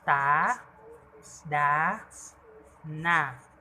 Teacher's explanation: Pangalawa ay ang pangngipin. Ang dulo ng dila ay dumidikit sa loob ng mga ngiping itaas.